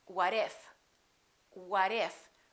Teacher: look at this we have a tee between two vowels and when the t is between two vowels it becomes a fast d